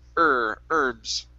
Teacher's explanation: we do have a handful of words where the h is not pronounced herbs is one of them